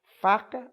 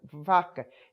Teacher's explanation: Ela troca muito o F com o V, porque as duas só se diferenciam porque uma é surda e outra é sonora